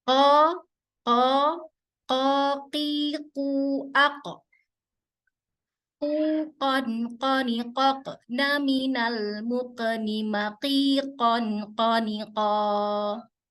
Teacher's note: ketika sukun itu dipantulkan, huruf qaf itu dipantulkan dan juga itu akan menggetarkan pita suara. Makanya dia bisa memantul.